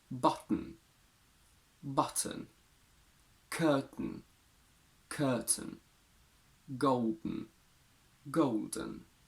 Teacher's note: the sound is released nasally meaning that you keep your tongue against the alveolar ridge after that and and then release the sound through the nose